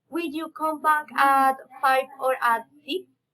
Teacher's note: Alternative question, raising and falling intonation.